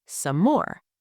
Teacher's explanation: Some more, the 2 Ms merge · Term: same sound linking